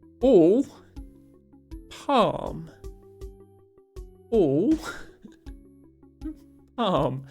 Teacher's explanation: Americans say those two words with the same vowel sound, and we don't.